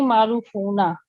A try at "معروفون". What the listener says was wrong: معروفون تھوڑا سا لمبا کریں. معروفون.